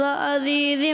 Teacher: ایک تو انہوں نے آخر میں جو ہے عزیزم، یہاں زا کی ادائیگی ذال محسوس ہوا، کلیئر آپ نے ذال ہی پڑھا غالباً